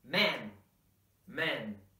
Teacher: the more open sounding man singular form